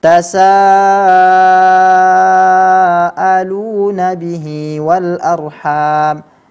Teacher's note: ini masuk ke dalam kelompok mad wajib muttasil yang dibaca mesti dibaca dengan panjang